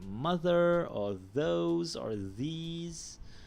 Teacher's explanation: your voiced dental fricative, you find it in words like mother, or those, or these